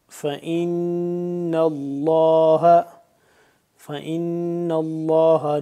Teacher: नून यहां पे मुशदिद है नून पे गुना हो रहा है और उसके बाद लफज़ अल्लाह पढ़ेंगे मोटा करके पुर करके पढ़ेंगे